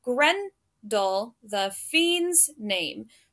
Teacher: so we have Gren and fiend those are the stressed syllables